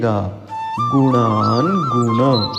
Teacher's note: न पढ़ते समय न का उच्चारण तालु के कुछ ऊपर मूर्धा से करना होता है, जहाँ से ट ठ ड ढ न बोलते हैं, सो पढ़िएगा गुणान गुण।